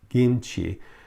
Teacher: because they don't have the short I sound either. So kim, doesn't happen. It'd be pronounced as a long E, and it'd be E, gim.